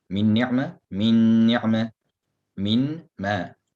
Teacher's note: Go straight into the mim with ghunna. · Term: idgham bi ghunna